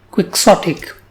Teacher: This word has 3 syllables, quick, sot, and ick, and the stress is on the second syllable